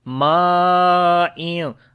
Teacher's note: It is again madde muttasil, like madde wajib. We long almost 6 counts